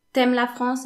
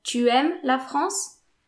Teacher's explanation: instead of saying tu, when the next word starts with a vowel, then just say t.